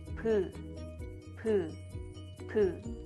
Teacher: I don't vibrate my vocal cords because all Korean consonant is voiceless sound, so I don't vibrate my vocal cords.